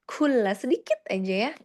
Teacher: Jangan lupa kafnya harus ada sedikit hamas ya.